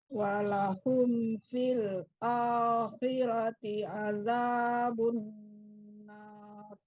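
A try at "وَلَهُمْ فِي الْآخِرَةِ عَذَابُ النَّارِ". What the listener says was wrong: Ya, wanya sudah bagus. Sekarang nggak tebal. Walahum fil bukan tapi walahum fil akhirati. Ulangi. Jadi kalau mau ketemu huruf tebal ini kan kho-nya kan tebal. Ini jadi bacanya fil baru kho dulu, baru kho. Jadi satu-satu. Terkontaminasi namanya. Terkontaminasi.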